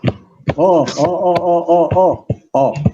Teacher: to make this sound you have to round your lips okay and the tongue has to move backwards